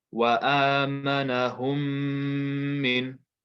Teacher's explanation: But if we look carefully, the reason why the shadda is there is because there's a meme sakin here, followed by the letter mim. So this second mim is going to be read with a ghunna.